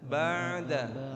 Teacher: Jadi suara ain enggak sampai keputus. Dia sudah pindah ke dalnya. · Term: jangan putus